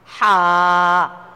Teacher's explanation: যখন হা উচ্চারণ করবেন, কণ্ঠনালীকে একটু চাপা দিয়ে হা উচ্চারণ করতে হবে।